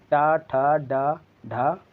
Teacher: ऐसे शब्द जिनका उच्चारण जीभ के लचीले हिस्से मतलब आगे के हिस्से जो ज़्यादा लचीला होता है उसकी सहायता से और साथ ही तालु की सहायता से किया जाता है वो मूर्धन्य कहे जाते हैं